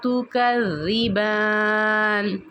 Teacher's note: زبان کی جو نوک ہے جب اوپر کی دو دانتوں کے سروں سے ٹکراتی ہے تو پھر وہاں سے تا کی ادائیگی ہوگی اور اس تا کو بھی آپ نے موٹا نہیں کرنا، باریک پڑھنا ہے۔